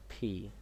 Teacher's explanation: দুই ঠোট এক জায়গায় করবে। দুই ঠোট এক জায়গায় এক জায়গায় করে উচ্চারণ করতে হবে। ফি একটু এয়ার বের হবে।